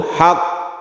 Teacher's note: maka kita tasydidkan dahulu baru diqalqalahkan. Hasol haq, baru kok, bukan langsung haq tapi ditahan dulu.